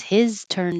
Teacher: I'm not getting rid of this H because I'm emphasizing it. So if you have an important reason, in this case it's his turn, then you keep the H.